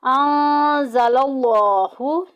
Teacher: लफ्ज़ अल्लाह का लाम मोटा पड़ा जाएगा क्योंकि पीछे ज़बर आ गई है